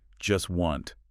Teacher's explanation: The source points out that in this particular utterance, the speaker doesn't pronounce the T sound in either word. Not in just and not in wanted. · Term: consonant reduction